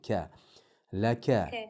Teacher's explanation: Tilimizni eng oxirgi qismidan chiqadi. Eng oxiridan, nihoyat oxiridan qof chiqsa, undan sal yuqorida kaf chiqadi. Inna laka ka deb turib tilingizni sal o'rtarog'iga olib kelib olyapsiz.